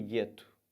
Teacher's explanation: eu não falo U. Esses dois sons ficam como se fosse um som de G só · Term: dígrafo